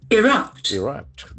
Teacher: The accent falls on the second syllable.